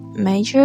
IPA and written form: ˈmeɪ.dʒər (major)